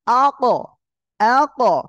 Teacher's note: জিহ্বার গোড়া তার বরাবর উপরে তালুর সঙ্গে লাগিয়ে উচ্চারণ হয়। উচ্চারণের সময় ওই জিহ্বার গোড়া তালুর সাথে জোরে শক্ত আকারে একটা ধাক্কা লাগিয়ে উচ্চারণ হচ্ছে